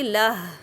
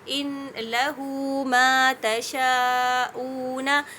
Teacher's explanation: جب میں اس کو آگے ملا کر پڑھوں، جیسے ان لہو ما تشاءون، تو لہو ما، اب جب میں نے اس کو پڑھا تو لام بھی متحرک ہے، ما بھی متحرک ہے، اور جو ہا ضمیر کی ہے میں نے اس کو ملا کر بھی پڑھی، تو اس وجہ سے یہ صلہ ہو گیا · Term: مد صلۃ الصغریٰ